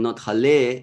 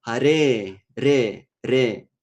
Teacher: ra is the sound when we press our tongue to the place above our upper teeth. It's called alveola.